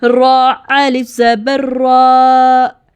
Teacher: را پر زبر ہے تو را کو ہیوی پڑھنا ہے، تو الف مد کی ساؤنڈ بھی ہیوی ہوگی